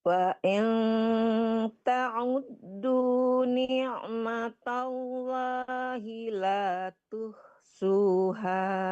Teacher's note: ain ya, Bu, di tengah-tengah tenggorokan. Jangan ta'ud.